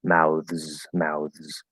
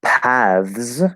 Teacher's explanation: it could be voice th with z voiceless th with s